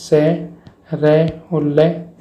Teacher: वर्तसीय व्यंजन यानी कि मसूड़ों की सहायता से बोले जाते हैं